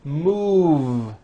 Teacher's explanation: Move has that voiced V sound.